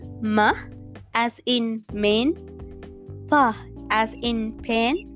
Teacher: alveola [Music] epiglottal and glottal first is pillabile here destruction is created using both the upper and lower lips